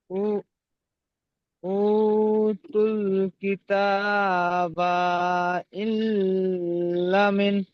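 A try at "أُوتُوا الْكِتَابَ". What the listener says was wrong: কিতাবায় টান নেই, তো বায় টান দিয়েছেন। ইল্লা, লাম আলিফ জবর লা, এখানে টান হবে, এখানে টান দেননি।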